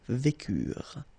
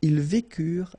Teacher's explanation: Ils vécurent, so remember, mark for the plural, and T is not pronounced phonetically, you don't get it